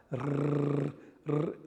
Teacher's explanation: So we have that flick between two vowels and a roll when it's doubled or at the beginning of the word. So this is a voiced trill dental.